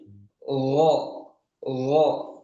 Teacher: Dia tidak maju mulutnya, bibirnya tidak maju. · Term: huruf gin